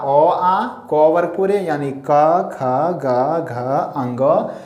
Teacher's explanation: ओ, आ, क वर्ग पूरे, हो, और विसर्ग का उच्चारण कंठ से होता है